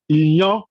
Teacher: Fáwẹ̀lì àránmúpè eléyìí tí ó jẹ́ pé inú ihò imú ni atẹ́gùn ti máa ń jáde nígbà tí a bá pè wọ́n.